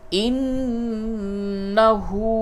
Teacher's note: ہا الٹا پیش ہو کو بھی تھوڑا سا کھینچیں گے